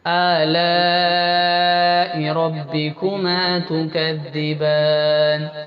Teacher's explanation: Next ورس فبأي آلاء، آلاء، یہ اس کو بھی اچھا لانگ کھینچنا ہے. 5 الف، 5 انگلیاں کھولنے جتنا ٹائم لگتا ہے اتنا لانگ کھینچیں گے